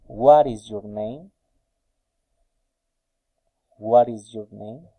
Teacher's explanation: a special questions falling intonation